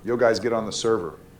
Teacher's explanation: It's like they're just saying the word, but there's no intonation. The words don't flow with each other. It's like they're saying each individual word, each individual syllable.